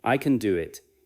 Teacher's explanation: keep can light, and let do carry the message.